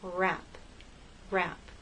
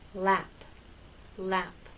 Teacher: The tongue is more tense for rap, for R, than it is for lap, L.